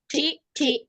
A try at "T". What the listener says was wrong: এটা টি না তো, এটা ঠ ঠ ঠ ঠ ঠ ঠ time.